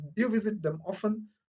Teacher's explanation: how the voice rises at the end of a sentence. So rising intonation is common in general questions.